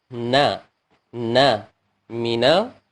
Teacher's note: makhrajnya ujung lidah menyentuh langit-langit atas